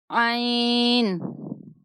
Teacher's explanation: عین وسط حلق سے ادا ہوگا